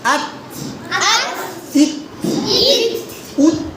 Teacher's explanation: দেখেন অনেকে উস বলেন না, সিনের মতো উচ্চারণ করেন না, তো এটা তো না। আত উচ্চারণ করবেন, হালকা শ্বাসটা ছাড়বেন, শ্বাসটা জারি থাকবে, এতটুকুই।